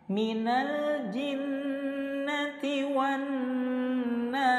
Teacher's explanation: Nun tasydid hukumnya gunnah musyaddadah, cara bacanya didengungkan selama 2 harokat